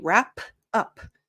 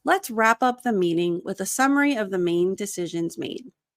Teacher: it's less aspirated. You don't hear the p.